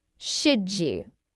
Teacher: The D sound and the Y sound combine to make J